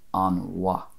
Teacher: in the other dialects, it would most likely be an wa, without that little extra vowel in between an and va